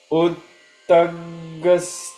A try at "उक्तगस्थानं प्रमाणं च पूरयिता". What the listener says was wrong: not utta उक्तगस्थानं प्रमाणं च पूरयिता